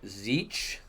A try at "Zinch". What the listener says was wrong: I pronounce it Zinch with an N in there. Zinch.